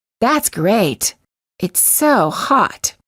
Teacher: you will sometimes hear Americans release the final T. If they do, it's usually at the end of a phrase or a sentence, or for special emphasis of a word.